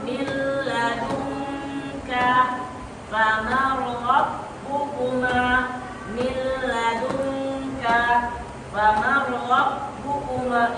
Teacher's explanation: Ketika nun sukun atau tanwin, nun sukun atau tanwin, ini nun sukun, ini tanwin. Ketika nun sukun atau tanwin bertemu salah satu dari huruf lam atau ro, maka dibaca tidak dengung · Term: Idgham bila guna